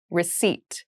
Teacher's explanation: there is a p in the spelling of this word but we do not pronounce it